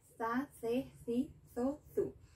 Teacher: Here in Latin America we don't pronounce Z, like za.